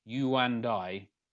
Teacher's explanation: You put a little W in front of the and we get wand